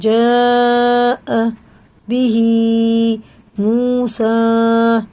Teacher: یہ جو مد ہے مد متصل ہے، اس کے بعد حمزہ آ رہا ہے، یہ 4 الف کے برابر میں کھینچ کے پڑھنا